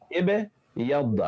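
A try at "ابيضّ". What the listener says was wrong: তুই কিন্তু বে এর নিচে জের পড়তেছিস এটা সুকুন ইব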